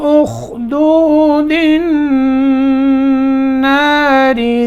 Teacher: दाल को नून से मिलाना है, ठीक है। बीच में हम अलिफ और लाम ये दोनों छोड़ देने, वो लिखने में आते हैं।